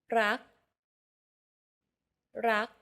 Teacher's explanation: Do you notice how air in the final K sound is not expelled? This is true for all final consonants in Thai words.